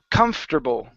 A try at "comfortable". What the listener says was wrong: Nope, almost. So you said it right 2 times, but you're still adding in that OR. The OR, you need to remove that from the word.